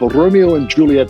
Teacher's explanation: I really like the way you trilled the R on Romeo